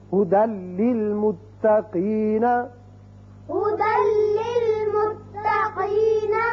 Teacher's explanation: دال کی ایک زبر لام سے ملے گی اور بغیر غننے کے پڑھا جائے گا